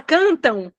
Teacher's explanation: o m tem som de u e aí ele fica como um som nasal